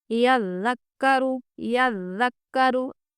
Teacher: یزکا میں زا سختی سے پڑھنا ہے، یعنی کہ دونوں دانتوں کو ملاتے ہوئے، یزکا سختی کے ساتھ، یذکرو، یذکرو، یز میں آپ محسوس کر سکتے ہیں آواز کیسے باریک ہو رہی ہے